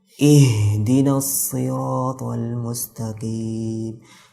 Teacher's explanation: Itu berlebihan dalam melafadzkan huruf H karena dia melafadzkan huruf H melalui dada.